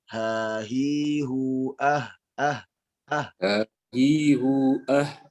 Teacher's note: Yang ada suara pedasnya, tapi dia lebih dekat sekali kepada pita suara. Ya, jadi yang terdengar itu seakan-akan seperti hanya udara saja. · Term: makhraj H